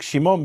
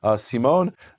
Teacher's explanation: Greek doesn't have a sh sound, so it becomes a S.